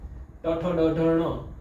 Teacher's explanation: ટ ઠ ડ ઢ ણ એમાં પૂરેપૂરી મૂર્ધાને અડે છે. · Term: સ્પર્શ વર્ણ